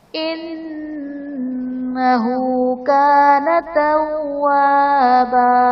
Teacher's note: انہ نون مشدد غنہ کریں گے، ہا پر الٹا پیش، واو مدہ کے قائم مقام ہے، اسی لیے اسے ایک الف یعنی دو حرکات کے برابر کھینچ کر پڑھیں گے.